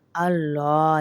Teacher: لام کو موٹا کریں گے، پر کریں گے